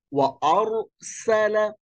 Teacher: র একটু শক্ত করে মোটা করে পুর করে পড়তে হবে